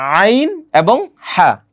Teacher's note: আইন এবং হা উচ্চারিত হয় হলকের মাঝখান থেকে এই দুটি হরফ উচ্চারিত হয় হলকের মাঝখান থেকে মানে কন্ঠনালীর মাঝখান